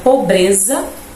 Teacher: esse A final vai ser átono, ou seja, ele não tem essa força ali na tonicidade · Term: vogais átonas finais